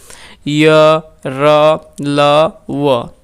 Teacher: अंत यानी कि मध्य या बीच अस्थ स्थिति इन व्यंजनों का उच्चारण स्वर तथा व्यंजन के मध्य का सा होता है। यानी कि उच्चारण के समय जिह्वा मुख के किसी भाग को स्पर्श नहीं करती। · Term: अंतस्थ व्यंजन